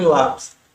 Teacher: o acento está na penúltima sílaba, que é o LA